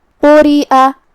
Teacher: قاف کو ہم تفخیم سے ادا کریں گے، مطلب بھاری آواز میں، را کو ہلکی آواز میں کیونکہ اس کے نیچے زیر ہے، تو یہاں را کا حکم ہے ترقیق۔